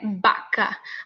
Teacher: Mais suave porque você quase nem, você não faz como pronunciando baca, que esse som parece que está explodindo da sua boca. O ar é bloqueado e depois sai mais forte